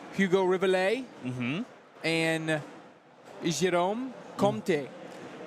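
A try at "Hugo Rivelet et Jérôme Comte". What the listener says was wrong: You need a little bit more French accent. You don't say the last vowel or the last consonant You don't say the last consonant.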